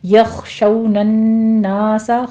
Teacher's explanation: خو کو پر پڑھیں گے، شو میں واو لین ہے، نون مشدد ہے، غنہ واجبہ کریں گے، 2 کاؤنٹ کرنا ہے۔